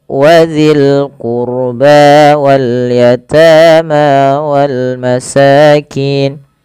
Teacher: Pada lafal qurba tebalkan rohnya karena huruf ro sukun didahului dengan dhamma.